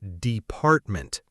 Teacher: Many learners say department, first syllable. But the correct stress is department, the second syllable.